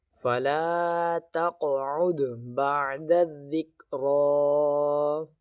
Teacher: الف سے پہلے حرف لام کے اوپر زبر موجود ہے تو الف مدہ ہوا، ایک الف یعنی دو حرکات کی مقدار تک کھینچ کر پڑھیں گے۔ اس جگہ پر حرف قوف موجود ہے اور یہ حرف قوف ساکن بھی ہے کیونکہ جزم ہے حرف قوف کے اوپر۔